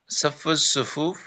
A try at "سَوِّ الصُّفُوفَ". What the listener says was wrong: صف الصفوف نہیں، سوي الصفوف. واو ہے، سوي الصفوف.